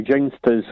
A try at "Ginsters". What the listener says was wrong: It's a hard G on ginsters.